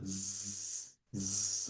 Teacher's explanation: Como em português, a letra Z, diferente do S, que você não força as cordas vocais, no voiced sound, você pensando na letra Z, ela sai, existe uma sonoridade sendo vibrada. Zzz, zzz, as suas cordas vocais respondem a vibração da palavra.